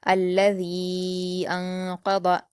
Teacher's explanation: الذی انقض، حمزہ پر حرکت جلد پڑھیں گے، نون ساکن کے بعد قاف ہے تو یہاں پر اخفا کا قاعدہ ہے، نون ساکن کی آواز کو چھپا کر غنہ کے ساتھ پڑھیں گے